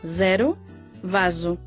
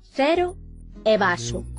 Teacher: O S simple e o Z son tamén sonoros en portugués, zero, vaso, fronte ao galego, cero e vaso.